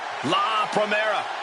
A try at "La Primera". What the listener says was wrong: You need to roll your R's a little bit on that, man. La Primera.